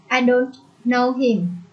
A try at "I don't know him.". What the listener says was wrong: Yeah, I don't. Yeah, get the T on the end of that word, Ein.